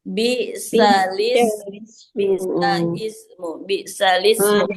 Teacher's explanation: kedua hamzah tersebut tidak terbaca apabila disambung dengan kata sebelumnya. Jadi, akhirnya diambillah pembelajaran ya, diambillah metode naql ini agar menambahkan harakat pada huruf sebelum sebelum hamzahnya.